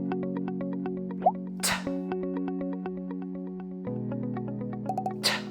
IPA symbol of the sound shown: t